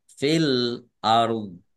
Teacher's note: Kemudian eh, dha-nya dibaca sukun karena wakob. Jadi ada ro sukun dan dha sukun dibaca antara ro dan dha.